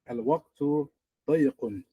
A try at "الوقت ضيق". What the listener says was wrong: But let me hear the ya, and it has a shadda on it and it has a kasra. Ya, shadda, kasra. ضيق. الوقت ضيق.